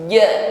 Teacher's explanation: Jim ini sifatnya asyiddah ya, kuat tekanan hurufnya.